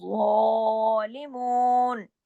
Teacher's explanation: ज़ा को मोटा भी, ज़ा को एक अलिफ के बराबर खींचना भी